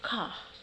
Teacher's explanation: Australian speakers tend to drop the R. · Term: non-rhotic